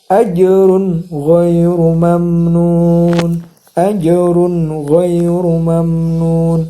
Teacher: Maksudnya jelas tanwinnya juga jelas ghinnya. Tidak ada dengung di antara run dan gho. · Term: izhar syafawi